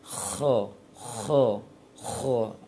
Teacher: Ada terasa aliran nafas yang kuat dari mulut kalau kita letakkan telapak tangan di depan mulut. Dan dia sifatnya rakhawah, bukan syiddah. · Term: hamas